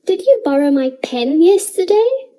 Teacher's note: I am putting emphasis on the pen because I would like more information about it. Try to say the sentence with the stress on pen.